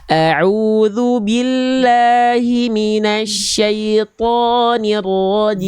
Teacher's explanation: A'udzu billahi, 2 harokat saja. Lalu di bagian huruf ro-nya jangan hilang getarannya, tetap ada getarannya. Walaupun dia getarannya sedikit, tapi huruf ro itu getarannya tetap tegas, lugas dan jelas.